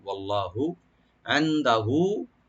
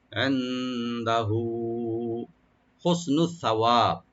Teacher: এন্দা নুন সাকিন এখানে একফা করবেন, দাল ওপেন থাকবে, আর হাটাকে আমরা একটু একালে করে টানবো।